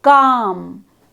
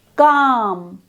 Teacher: as you say the vowel aloud, calm, you should feel that the tongue elevation is towards the back of the mouth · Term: back vowel sound